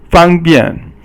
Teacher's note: Fang is yi sheng, and then bian is si sheng, and yi sheng is first tone, and si sheng is fourth tone again.